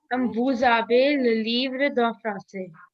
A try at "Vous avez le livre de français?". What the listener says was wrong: Very nice.